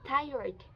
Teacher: the /t/ sound is classified as a voiceless alveolar plosive, also known as a stop consonant. It is produced by placing the tongue against the alveolar ridge behind the upper teeth and then releasing the airflow suddenly.